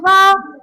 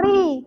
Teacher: ra atas ra tebal. Ra di bawah ri nipis.